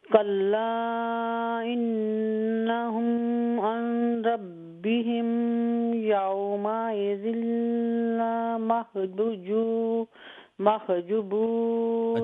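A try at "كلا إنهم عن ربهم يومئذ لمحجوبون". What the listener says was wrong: अच्छा, कल्ला इन्नहुम के बाद गुन्ना नहीं है, उसके बाद अर्रब्बिहिम के बाद गुन्ना नहीं है. कल्ला इन्नहुम अर्रब्बिहिम यौमइज़िन लमहजूबून.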